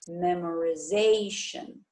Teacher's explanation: The primary accent shifts to the syllable before shen.